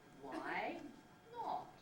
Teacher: if it's a single syllable head why not then the pitch on that head actually has to move it has to be rising on the y why not so it sounds exactly the same